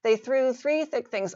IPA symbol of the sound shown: θ